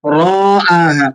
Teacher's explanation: آپ نے را کو نہیں کھینچنا، حمزہ کو کھینچ کے پڑھنا ہے، کیونکہ حمزہ پر کھڑا زبر ہے. تو کھڑا زبر، کھڑی دیر یا الٹا پیش یہ ایک الف کی مقدار کھینچ کر پڑھی جانے والی حرکات ہیں.